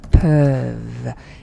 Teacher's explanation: you don't pronounce ENT when it's a verb. Okay? Just pronounce the last consonant, which is V.